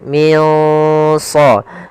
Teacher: shad termasuk huruf tebal dari huruf istiala. Maka dia samarkannya agak ditebalkan